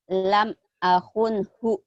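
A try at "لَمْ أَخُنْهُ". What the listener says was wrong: Lam akhun khu, kho-nya enggak keluar.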